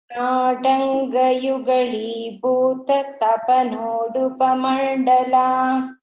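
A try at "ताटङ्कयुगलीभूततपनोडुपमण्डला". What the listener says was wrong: Same with in Tatanka, this ka should not sound like ga, it should be ka. Tatanga yugali bhuta tapanodupa mandala. Tatanga yugali bhuta tapanodupa mandala.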